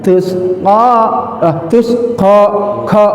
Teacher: ko huruf lisan tapi pangkal lidahnya naik ke atas menutupi rongga atas